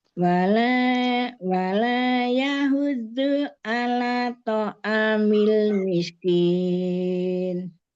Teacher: Wala, la-nya 2 harokat, jangan kurang.